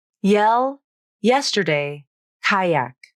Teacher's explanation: The Y consonant is also a voiced consonant, which means the vocal cords are turned on as you say it. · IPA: /j/